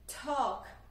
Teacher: Que, apesar de ter esse L, né, escrito aqui, ele não é pronunciado.